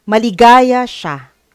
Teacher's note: Katulad ng sinabi natin, pag nagpapahayag, nag-i-end sa tuldok, ang pagbasa dyan ay maligaya siya. So, yung tono sa dulo ay bumaba.